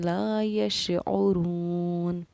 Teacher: یشعرو کے رو کو ہم نے 1 الف کی مقدار کے برابر کھینچ کر پڑھا ہے۔ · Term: حروف مدہ